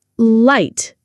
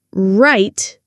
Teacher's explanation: Light. Tongue touching, right tongue not touching.